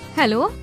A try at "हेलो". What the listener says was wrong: नहीं, थोड़ा सा धीमा, जैसे किसी को रिझाना चाहती हो।